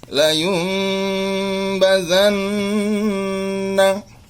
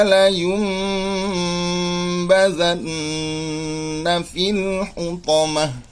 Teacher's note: suara nun sukun menjadi mim sukun karena bertemu ba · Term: iqlab